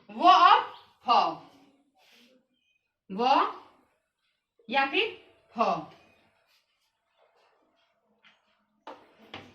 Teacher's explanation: दंतोष्ठ से व और फ, व या फिर फ